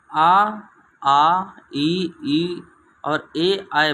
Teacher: अगर तुम आप आ ई और ए आए बोलेंगे तो हमारा जो ओठ है व्रतमुखी गोलाकार नहीं बनेंगे, इसीलिए इन्हें आवृतमुखी कहते हैं।